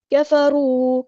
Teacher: را میں دیکھیں یہاں پہ اوپر پیش آئی ہے یعنی ضمہ آیا ہے تو یہ ہیوی لیٹر پورا ادا کریں گے